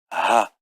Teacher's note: The preferred pronunciation is purely aspirated.